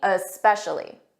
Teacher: some students they add an uh at the front of s's. So when you try to say specially, make sure you don't add that uh and make it sound like especially.